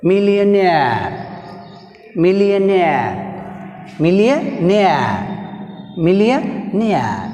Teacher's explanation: So last prefix aire, see here word millionaire, millionaire, millionaire, millionaire, nair, aire came, suffix came, nair lo aire suffix came, that's why nair is last syllable. In millionaire word nair is last syllable, so take stress on last syllable nair.